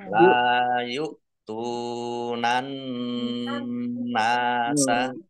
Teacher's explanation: Nun tasdid dibaca gunah atau dibaca mendengung, ditahan dua harokat. Biar mendengung maka harus ditahan.